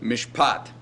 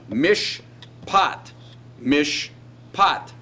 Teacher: So you have the long vowel in the accented syllable